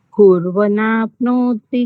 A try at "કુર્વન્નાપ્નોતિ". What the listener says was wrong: કુર્વન્નાપ્નોતિ, ન ને નકાર જોડેલો છે ને, કુર્વન્નાપ્નોતિ.